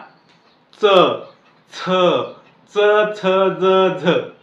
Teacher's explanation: दाताची जी मुळ आहेत त्या मुळाला जेव्हा आपली जीभ चिकटते तेव्हा या दंत तालव्याचा उच्चार होत असतो